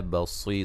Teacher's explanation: وقفاً را کو باریک پڑھیں گے، ملانے کی صورت میں را موٹی ہوگی اور یہاں نون تنوین کا اظہار ہوگا ملانے کی صورت میں،